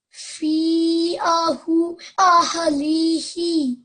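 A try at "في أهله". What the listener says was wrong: Just again over here, so on the ha, remember 2 seconds. Fi ahlihi.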